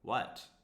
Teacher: Falling intonation, it's an information question.